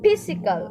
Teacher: The letter P is unvoiced since when we pronounce the letter P, it feels like just an air. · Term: stops